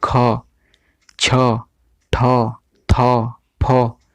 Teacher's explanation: ठीक है, तो अल्प प्राण क्यों कहा गया है, क्योंकि क च ट त प बोलिए, तो इसमें जो है उतना अधिक प्राण नहीं लग रहा है आपको, उतना अधिक सांस छोड़ने का नहीं हो रहा है। लेकिन जब आप लोग ख छ ठ थ फ इस तरह बोलते हैं तो आपको एक जोर का अब जो है सांस बाहर निकलता है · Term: महाप्राण